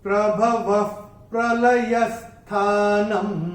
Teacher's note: अनुस्वार जब चरण की समाप्ति पे आएगा तो उसका उच्चारण केवल और केवल म ही होगा।